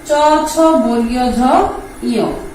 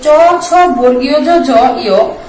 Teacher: এই যে চ ছ বর্গীয় ঝ ঝ ইয়, এই পাঁচটা ধ্বনি উচ্চারণের সময় তোমার জিহ্বা তালুকে স্পর্শ করে। যেহেতু জিহ্বা তালুকে স্পর্শ করে, সেহেতু এই পাঁচটাকে বলা হয় তালব্য ধ্বনি, তালব্য ধ্বনি।